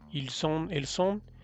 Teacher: se liga la S con el sonido de on, entonces sí se pronuncia ils sont o elles sont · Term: liaison